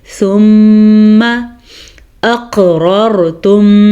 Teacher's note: قاف کے اوپر کلکلا ہو رہا ہے